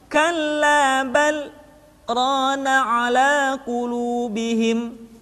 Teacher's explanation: Kalimat bal berhenti sejenak, tahan nafasnya selama 2 harokat, kemudian dilanjutkan kembali.